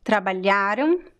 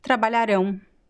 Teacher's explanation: So the AM is pronounced exactly the same way as the AO. They are both pronounced the same way. But the stress of the word, the stress syllable is different. It's not the same.